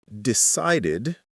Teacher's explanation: stress on the second syllable